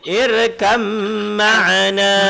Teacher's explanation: Bukan ha, ini mim. Jadi irkab ma'ana dibaca jadi irkam ma'ana, sebab mim dia disabdukan, mim jadi dengung. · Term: idgham mutajanisan